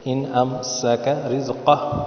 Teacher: سین کو سیٹی کی طرح بجائے،